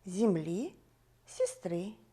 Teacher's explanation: Правильно, во всех словах ударное окончание.